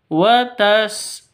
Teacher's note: karena kita berhenti di sini bacanya maka h-nya harus disukun disukunkan, dimatikan